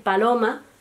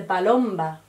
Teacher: en vez de decir paloma, se dice palomba, porque el grupo consonántico MB todavía permanece